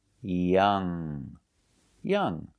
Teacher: And the ng, do not pronounce the g sound.